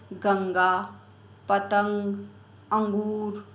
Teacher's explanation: जैसे गंगा, पतंग, अंगूर, ये रहता है ना, तो इनका उच्चारण नासिका से होता है। अनुस्वार जो है इनका उच्चारण नासिका से होता है